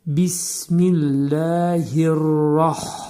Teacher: ra təxfim oxunur, qalın oxunur. Hə hərfinin üstündə ani tormuzlanma.